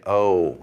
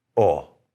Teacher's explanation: So what we want to do is hold our mouth straight and not move our lips and just simply say, oh